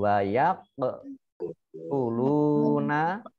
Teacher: Kof, sukun, bacaan kol-kolah, kubro. Baca memantul. Wayak, uluna, lamdumah.